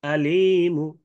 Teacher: একালিফের সাথে মু হবে, মুন হবে না